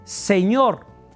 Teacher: es indistinto para nosotros, al menos en México, el sonido de la Z, la S y la C.